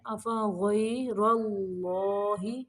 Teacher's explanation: افغیر، غین کو موٹا پڑھیں گے، را کو بھی موٹا پڑھنا ہے